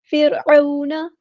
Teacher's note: آلہ نہیں پڑھنا، آلہ فرعون، فرعون نہیں کرنا، را کو ہلانا نہیں ہے، را یہاں پہ ساکن ہے، لائٹ لیٹر ہے، باریک پڑھیں گے، عین کو وسطی حلق مڈل تھروٹ سے ادا کریں گے، مد لین ہوگی، نرمی سے موڑیں گے، نون کی زبر کو لمبا نہیں کریں گے، حرکات کو لمبا نہیں کرتے۔